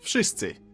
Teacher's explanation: W in wszyscy should sound like w, wódka, wojna, but it seems to soften up to an F